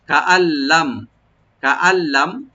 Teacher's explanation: কাআল্লাম, কাআল্লাম, কাফটাকে open রাখবেন, আর এই যে নুন সাকিন আছে, নুন সাকিন যে লাম আসছে এখানে এদগাম হবে গুন্না ছাড়া, নুনটাকে পড়া হবে না, লামের সাথে সরাসরি মিলে গুন্না ছাড়া পড়তে হবে